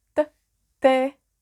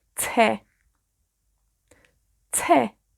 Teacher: En español es mucho más suave, T, T. En galés es más al frente en la boca, detrás de los dientes.